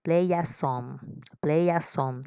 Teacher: cuando lo unimos sería play a song, como si fuera dos palabras y no tres